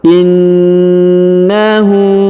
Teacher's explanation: kemudian huruf na ditahan dan ditekan karena berharakat tasdid in kemudian Hunya dipanjangkan dua harakat karena harakat u terbalik